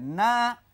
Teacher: জবরের বামে খালি আলিফ, মাদের হরফ, এক আলিফ টেনে পড়তে হবে